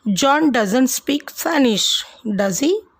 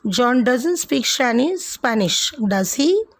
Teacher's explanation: My voice went down at the end with does he? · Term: Falling intonation